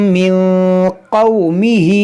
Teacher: نون ساکن کے بعد قاف حروف اخفا ہے، تو یہاں پر اخفا کریں گے